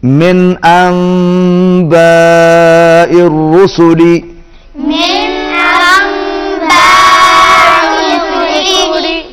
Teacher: مل جائے گی، انباء، نون میم کے ساتھ مل جائے گی، با کے اوپر پھر مد ہے، بڑی مد ہے، اس کو کھینچ کے پڑھیں گے